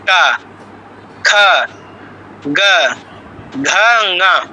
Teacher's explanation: জিহ্বার গোড়াটা একদম কণ্ঠের গোড়ায় একদম মুখের ভিতরের দিকে লেগে স্পর্শ করে টাচ করে নেমে যাচ্ছে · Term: কণ্ঠবর্ণ